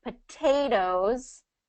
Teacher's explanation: Okay, so whatever that stressed syllable has that T in it, so like potatoes, that second syllable is the stressed syllable, so we're not going to change that T anywhere